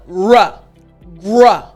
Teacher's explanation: the R sound is just made by your tongue not touching the roof of your mouth